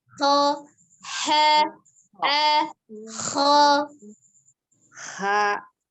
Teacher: ada udara yang mengalir ketika mengucapkan huruf ha, kayak kepedesan tuh